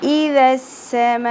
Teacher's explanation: ویسے تو ہم نے میم زبر کے ساتھ الف حرف مدہ ملا کر ایک الف کے برابر کھینچنا تھا، لیکن کیونکہ سبب مدہ آ گیا اور حمزہ اسی کلمہ کے اندر آ گیا، اس لیے 5 الف کے برابر کھینچیں گے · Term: مد متصل